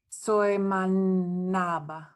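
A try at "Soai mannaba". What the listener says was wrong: Yeah, swai-mannapa. And we have the stress on the yeah, good. Stress on the first.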